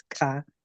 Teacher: Like ka is supposed to be the most forceful, and then ka or ka, you kind of put an H in front of the K, so it's ka. So it's aspirated